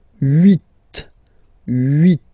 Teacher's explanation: this H letter here, okay, doesn't exist phonetically, so we don't really pronounce it